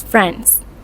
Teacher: Your mouth will have to do extra work, so in many cases, the D sound is not pronounced